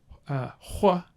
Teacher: like a labialized velar fricative